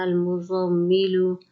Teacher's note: میم پر غنہ کریں گے، کھینچ کے کسی لفظ کو نہیں پڑھنا